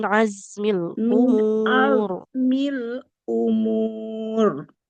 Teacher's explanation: hamzah domah ketemu wau dua harakat